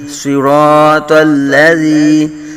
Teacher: زال کو باریک پڑھیں گے، جو ہے وہ نرمی سے پڑھیں گے، سختی نہیں یہاں کریں گے، اگر سختی سیٹی بج گئی تو پھر یہ زا بن جائے گا